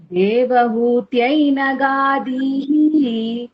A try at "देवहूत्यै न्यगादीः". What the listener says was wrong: ना கிடையாது न्या न्या